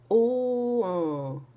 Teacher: It's like an OH sound, O, like a long O, but you drop the soft palate and uvula to allow the air to flow into the nasal passages to nasalize the vowel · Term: nasal vowel